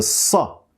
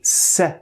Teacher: Air passes through and the sound is produced through the friction happening at the alveolar ridge. Remember, the most important part in pronouncing the sa is that the back of your tongue is raised.